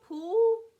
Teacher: ls at the end of a word like girl just drop it off